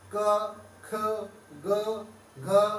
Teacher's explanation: कहीं पर भी जीभ या दंतों का, ओष्ठ का आपस में स्पर्श नहीं होगा, सारे वर्ण गले से बोले जाएंगे। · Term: कंठ